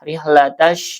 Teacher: Dibacanya diidgamkan ee alif lamnya tidak terdengar ya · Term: alif lam syamsiyah